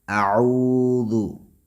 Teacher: واو مدہ ہے اور اس کو مد طبعی یا مد اصلی کہتے ہیں، یعنی ایک الف کے برابر اس کو کھینچنا ہے